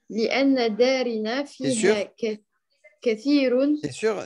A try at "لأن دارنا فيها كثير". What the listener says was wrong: T'es sûr pourquoi darina? Pourquoi un i ici?